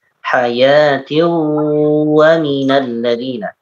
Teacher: Baik, untuk hayatiwa dimasukkan tanwin bertemu dengan wawu dimasukkan ke wawu. Hayatiwa minal ladina, dan ditahan 2 harakat. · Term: Idgham bigunnah